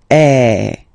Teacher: So it's really open. I mean, the sound is really open, and normally your mouth should be opened a little bit more than with the accent aigu as well. Okay, so it goes like eh. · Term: accent grave